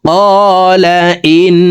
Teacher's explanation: হার উপরে উল্টা পেশ আছে তাই ঠোঁট গোল করে এই হাকে একালিপ টেনে পড়তে হবে। قال إنه, ইন এখানে ওয়াজিব গুন্না 3 সেকেন্ড পরিমাণ গুন্নাহ করে পড়ব।